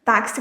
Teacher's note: O X ele representa aqui o som do ks. C. Então, na palavra taxi, a gente tem quatro letras, mas a gente tem cinco sons do T, do a, o X, como se fosse KS e o I.